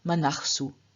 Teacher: In front of this s, the as at the end of manas changes into ach, so we have manachsu. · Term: visarga